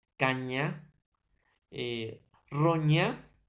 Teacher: Se produce cuando el dorso se aproxima hacia el paladar, o sea, la mitad de la boca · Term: palatal